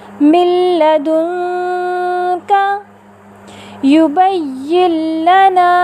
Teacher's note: آپ نے دیکھا ان دونوں مثالوں میں نون ساکنہ کے بعد حرف لام متحرکہ آیا تو ہم نے نون ساکنہ کو لام متحرکہ کے ساتھ اس طرح ملا کر ادا کیا کہ دونوں ایک ساتھ مشدد ادا ہوئے بغیر غنے کے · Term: ادغام بلا غنہ